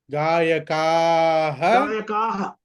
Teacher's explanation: మీరు హా అంటే నాకు వినిపించాలి క్లియర్ గా. విసర్గ ఉన్న దగ్గర హా అని వినిపించాలి చాలా క్లియర్ గా నాకు.